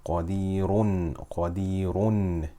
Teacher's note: This is full mouth because it has dhamma. But if we stop on it, we make it sakina.